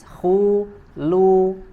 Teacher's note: di huruf lamnya harus kita sempurnakan dibaca dengan tipis